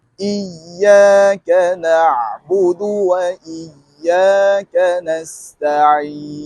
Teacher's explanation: Untuk huruf Ain, dalam setiap keadaan, ketika baris atas, baris depan, baris bawah, sukun ataupun sabdu, tak boleh ada di rongga hidung. Makhraj bagi huruf Ain, keluarnya daripada tengah kerongkong, suara kita terus ke rongga mulut. Untuk menghasilkan sebutan huruf yang cantik, lunakkan bunyi huruf Ain dengan kita sempitkan ruang kerongkong. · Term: huruf Ain sukun